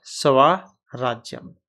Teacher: दो र हो गए तो पहले वाले का लोप कर देगा और आ हो जाएगा मतलब पूरा स्वर जो है वो दीर्घ हो जाएगा तो क्या